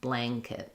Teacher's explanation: It's going to be an ng sound, because in a word like blank or blanket, when we have the n followed by the k, it's actually an ng and k sound